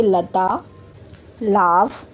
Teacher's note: ल को हम दंत यानी कि दांतों की सहायता से बोलते हैं।